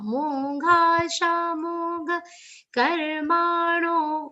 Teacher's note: Only two short sounds in this charan, gha and ka. Rest all sounds are long.